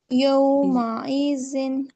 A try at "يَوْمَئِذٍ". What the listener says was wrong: حمزہ کا نہیں ادا ہوتا ہے، جب حمزہ نرمی سے یومئذ